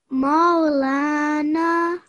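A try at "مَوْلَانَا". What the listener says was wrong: Good, well done.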